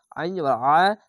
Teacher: আইনটিকে মোটা করে গলা চিপে পড়বেন।